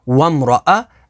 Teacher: را کے اوپر زبر ہے تو را کو پر یعنی موٹا پڑھیں گے